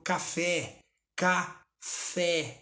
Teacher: o fé foi pronunciado com mais intensidade. Então essa é a sílaba tônica.